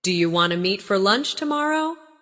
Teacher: Do you want to meet for lunch tomorrow? In casual speech, do you want to often sounds like do you wanna?